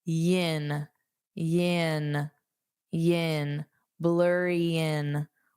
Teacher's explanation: So I can just use that Y, that Y sound, yin. So instead of in, it sounds like yin, yin, yin, blurry in. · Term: linking